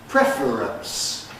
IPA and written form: ˈprefr̩əns (preference)